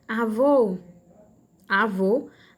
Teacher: a última sílaba vô, né? É a mais forte · Porque a última sílaba é a tônica. Angu, esse gu aí é a última sílaba, não é? E é a sílaba tônica também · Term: oxítona